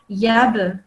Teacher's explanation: So this one is a kalkala letter, and you can see there's a sukoon on top. So you say it with a jumping sound